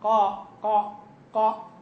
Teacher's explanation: تجد في القاف صح ان اللسان من اقصا استعلى لكن تجد وسط اللسان متباعد عن الايه عن الحنف اغ ها هل تجد اقتراب لوسط اللسان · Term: الانفتاح